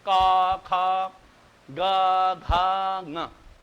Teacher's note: तो जितने भी क ख ग घ सब कंठ से उच्चारण, उसमें न दांत का प्रयोग हो रहा है, न जिह्वा का प्रयोग हो रहा है, न ओष्ठ का उच्चारण। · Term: कंठ स्थान